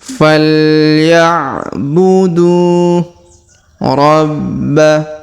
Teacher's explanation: Huruf ba ditahan dan ditekan karena terdapat tanda tasdid.